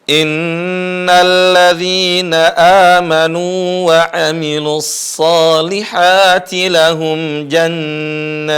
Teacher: Jadi jahar dulu, putus suara ta, kemudian muncul suara hamas.